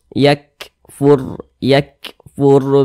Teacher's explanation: ini nih ada harakat Dah nih atau tanda baca dah maka huruf r-nya dibaca tebal dibaca tafkhim sehingga pangkal lisan kita itu naik terangkat ke atas ketika Kita mengucapkannya